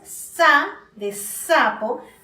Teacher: cuando tú dices sa, de sapo, el ápice de tu lengua está detrás de los dientes inferiores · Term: punto de articulación